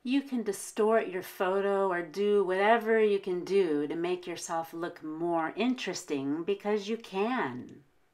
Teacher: The very last word is can, and we're going to stress it because it's the last word.